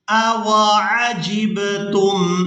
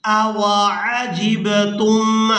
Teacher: جیم کو با ساکن کے ساتھ ملاتے ہوئے قلقلہ کے ساتھ ادائیگی کریں گے۔